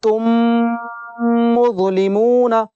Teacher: اب کیا ہوگا، میم کا میم میں ادغام شفوی ہوگا، یعنی ہونٹوں کو ہم ملائے رکھیں گے پڑھتے وقت اور ناک سے غنہ کریں گے، ناک سے آواز آئے گی